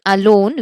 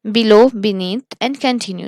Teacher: these words have the stress on the second syllable